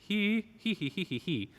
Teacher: So if we dissect the word here, right, you can hear there's a closed E.